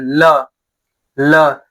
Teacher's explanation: जिन वर्णों के उच्चारण में जीभ के दोनों तरफ से हवा बाहर आती है उन्हें पार्श्विक व्यंजन कहते हैं